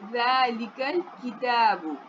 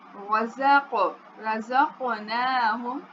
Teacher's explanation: کتاب دیکھیں کاف باریک پڑھا جاتا ہے اور قاف پور پڑھا جاتا ہے